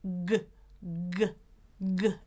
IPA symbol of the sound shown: g